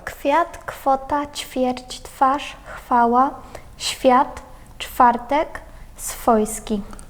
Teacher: приголосний В, після глухих, він звучить як Ф